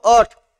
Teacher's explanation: अट या शब्दातील अ चा उच्चार हा लांबट आहे